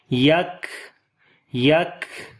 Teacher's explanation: اب سانس جاری کریں گے صفت ہمس کی وجہ سے